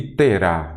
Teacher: a última sílaba é a tônica, é aquela acentuada, oxítona